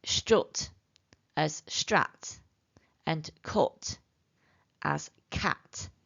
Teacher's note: southern speakers place the emphasis on the vowel a pronouncing words like strut as Strat and cut as cat